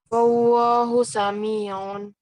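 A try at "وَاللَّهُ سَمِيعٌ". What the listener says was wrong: Nah, lamnya nggak kelihatan ya. Wallah, apa lidahnya itu nempel di gigi atas bagian dalam ya.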